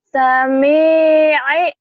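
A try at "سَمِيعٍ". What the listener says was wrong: I-nya jangan terlalu runcing.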